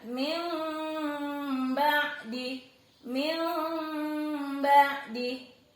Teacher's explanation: Min ba'di dibaca min sambil agak bindeng gitu ya. · Mengubah suara N diubah menjadi M. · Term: iqlab